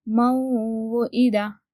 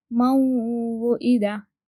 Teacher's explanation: اور نون جب ہم میم اور واو کو ملا کر پڑھتے ہیں تو نون ساکن واو سے مل جاتا ہے، اور نون کی بھی آواز ہمیں آتی ہے جب ہم پڑھتے ہیں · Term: گننا